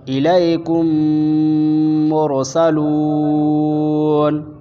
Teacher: میم ساکن کے بعد میم آئے تو پھر میم کو میم سے ملا کر غنہ اور اخفاء کے ساتھ پڑھا جائے گا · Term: ادغام شفوی